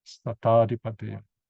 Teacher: they make it flow by eliding it. In other words, dropping off the I